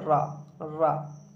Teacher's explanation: जिस वर्ण के उच्चारण में जिह्वा बेलन के आकार से हो जाती है उसमें लुंठित वर्ण कहा जाता है